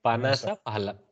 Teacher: Phalam has Mahaprana. Panasa has Alpaprana.